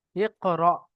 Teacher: অর্থাৎ হামজার উপরে যদি সাকিন হয়, তাকে ঝাটকা দিয়ে পড়তে হবে।